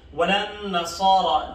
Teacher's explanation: نصارہ کی صاد اور را کو دونوں کو ہم موٹا پڑھ لیں گے